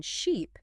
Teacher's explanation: the vowel sound in sheep is produced with your tongue high and forward in your mouth